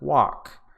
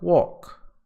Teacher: Notice how in the American pronunciation you hear ah, like walk, but in the British pronunciation it sounds more like o